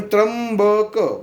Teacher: ठीक आहे, म नाही आहे, म अदृश्य आहे. पण त्र्यंबक ब उच्चारला की म आलाच अर्धा. ब त्र्यंबक मध्ये घेताना ब नुसता ब उच्चार केला तर वेगळा.